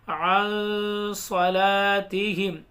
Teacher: حروف اخفا کے 15 حروفوں میں سے صاد آ رہا ہے نون ساکن کے بعد تو گنہ ہوگا